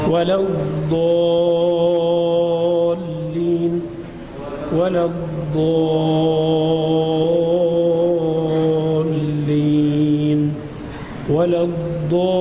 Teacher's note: بعدين عندنا صفه الاستطاله في الضاد